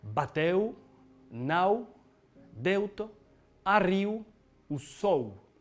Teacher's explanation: Alors le U en fin de syllabe, lui, on va le prononcer plutôt OU. Cette diphtongue, elle existe en anglais dans le mot out.